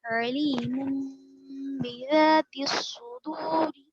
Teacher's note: وقف کریں گے تو را ساکن ہو جائے گی. موٹا پڑھیں گے